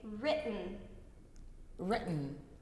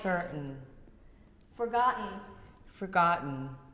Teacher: try this glottal stop on the end